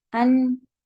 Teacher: زبان کی نوک اوپر کے مسوڑوں کے قریب جب لگ جاتی ہے ان، تو نون ادا ہو جاتا ہے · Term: نون کے مخرج